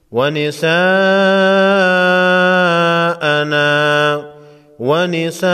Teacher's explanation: بڑی مد ہے، 5 الف کے مقدار کھینچ کر پڑھیں گے، یعنی 5 سیکنڈ۔